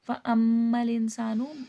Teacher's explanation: میم پہ میم مشدد ہے غنہ کر کے پڑھا جائے گا ، انسان ان میں اخفا ہوگا، نون ساکن پہ اخفا ہوتا